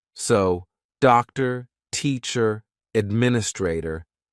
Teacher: It's just neutral. Nothing happens with the mouth. Nothing happens with the tongue. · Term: schwa